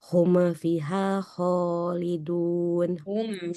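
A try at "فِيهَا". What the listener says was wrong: Fiha, dua-duanya mat asli. Ho, jangan ho.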